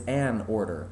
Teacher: that glottal attack that you have to do in order to stop the sound to say a order